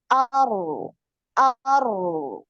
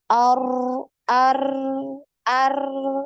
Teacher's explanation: Jadi ngalir, suaranya yang ngalir, bukan getarannya ya, bukan ar, bukan getarannya, bukan ar ar ar.